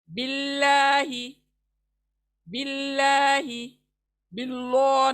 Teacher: زیر آیا، تو زیر کے ساتھ اللہ کو بھی باریک کر کے پڑھیں گے